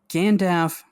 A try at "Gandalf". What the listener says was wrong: I just still hate the way you say Gandalf. There's an L.